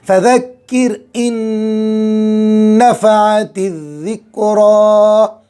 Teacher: नून साकिन के बाद नून आ गया, इदगाम मआ गुन्ना होगा और एक नून की आवाज़ ख़त्म हो जाएगी।